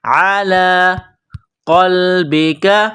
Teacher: قاف کو لام کے ساتھ پلس کرنا ہے، قاف کو موٹا کرنا ہے۔ قلبک، اس کاف کو باریک کرنا ہے۔